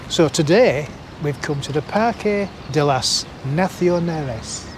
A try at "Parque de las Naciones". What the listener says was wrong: You put an L in there.